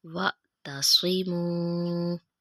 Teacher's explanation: سواد موٹا پڑھیں گے منہ گول کر کے